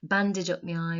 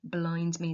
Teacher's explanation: Think about the aggressive, plosive sounds on bandage and blind